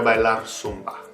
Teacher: It's not pronounced the way we pronounce a Z, like a buzzing sound in English. It's pronounced basically like an S, in Latin America anyway. In Spain, it's pronounced sort of like a TH, but we won't worry about that for now. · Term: la zeta